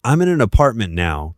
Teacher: The n connects directly into apartment. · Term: linking sounds